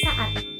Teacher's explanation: Pada kata saat memiliki dua silabel, yaitu sa dan at. Dalam kata saat ini terdapat dua fonem vokal yang terletak berdampingan namun berada di dalam suku kata atau silabel yang berbeda. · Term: deret fonem vokal